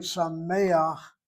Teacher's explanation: The last letter chet, following a frontal vowel, will have a stolen patah to glide